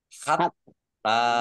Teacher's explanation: taknya dibaca double, ada tasdidnya. Biar kelihatan double maka ditekan.